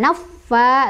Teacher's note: naffa ditekan tapi jangan didengungkan, naffa langsung.